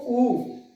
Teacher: होठ एक वर्त के आकार में घूम गए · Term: वर्तमुखी